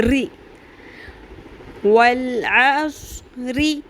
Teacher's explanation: را کی تھرتھراہٹ ہوگی لیکن را باریک ہوگا